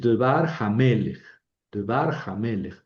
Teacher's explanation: las dos palabras pierden su acento y se queda el acento nada más en la última palabra